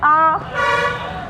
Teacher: आपसे जैसे ही पूछा गया आ, तो आपने बोल के भी देख सकते हैं, आ, मुंह खुल रहा है ना सबसे ज़्यादा, ठीक है, तो ये हो गया विवृत